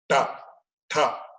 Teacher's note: the tongue actually, it goes reverse and then touches the inner portion of the palate. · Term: murdhanya aksharas